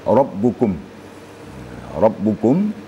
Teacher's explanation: sifat ba itu apabila dia bertasdik atau sukun maka sifatnya adalah syiddah syiddah ertinya suara tidak mengalir tertahan jadi jadi cara bacanya waukumukum